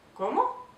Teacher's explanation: as you can see, my tone is starting low and going up. Como? All right.